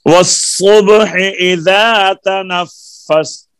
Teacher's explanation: लाम का साद में इदगाम हो गया ना लाम तारीफ का